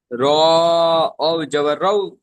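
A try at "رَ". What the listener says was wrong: না না, রটা আলাদা রয়েছে, র জবর র রয়েছে, দেখে পড়ুন। জবর র, র জবর র বলে আপনি ঝাটকা দিচ্ছেন, এটা হবে না।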